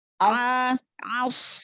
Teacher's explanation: shad sukun dan juga tampakkan ketebalannya, jangan seperti huruf sin. As, Aus, angkat pangkal lidah.